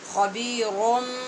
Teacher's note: یہاں پہ یہ حرف اقلاب ہے، نون کو میم سے بدل کر غنّے سے پڑھیں گے